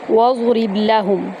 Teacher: واو کو ہم ضاد کے اندر داخل کریں گے اور پر پڑھیں گے، را کو با میں داخل کریں گے اور قلقلہ کریں گے۔